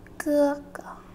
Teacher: Notice how the first word is enunciated more strongly than the second word.